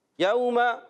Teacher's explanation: واو ساکن سے پہلے زبر آ رہا ہے، واو لین ہو جائے گا. واو ساکن سے پہلے جب کبھی زبر آئے واو لین، واو ساکن سے پہلے پیش آ جائے واو مدہ.